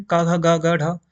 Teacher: ठीक है, मैंने यहाँ पे आपको बताया था क वर्ग के का, घ, ग, घ, ढ, ये कंठ यानी कि हमारे गले से बोले जाएंगे।